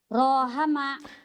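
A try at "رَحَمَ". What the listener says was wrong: Nggak ada yang panjang. Nggak ada yang panjang. Taiwan nggak ada yang panjang. Rohama gitu. Iya, kayak orang yang judes.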